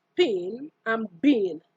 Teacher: The pa and ba are bilabial sounds.